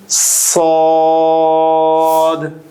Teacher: সদের মাখরাজ হলো জিহ্বার আগা সামনের নিচের দুই দাঁতের পেট ও আগার সঙ্গে লাগিয়ে উচ্চারিত হয়। · সদ বলার সময় দুই দাঁতের মাঝখানে হালকা ফাঁকা থাকবে এবং বাতাস জারি থাকবে, বাতাস বের হবে, যেমনটি আমরা সিন বা ঝাতে পড়েছিলাম।